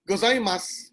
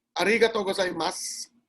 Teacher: they indicated that a letter u of the syllabary must not be pronounced